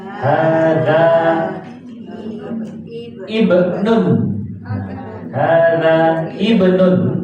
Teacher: Jadi alifnya tidak dibaca. Kalau itu hamzah hamzah wasal.